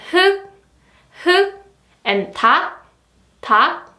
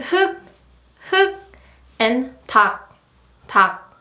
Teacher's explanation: when you see these 리을 기역 double consonants, you can just choose the 기역 only